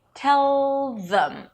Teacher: the tongue is already there for the th instead of placing it behind the teeth as you usually do